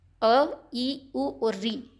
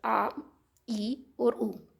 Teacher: दीर्घ स्वर हैं इनको बोलने में थोड़ा अधिक समय लगता है इनको बोलने में कम समय लगता है